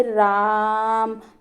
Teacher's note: रा जो है वो बहुत ज्यादा खींच रहा है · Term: प्लुत स्वर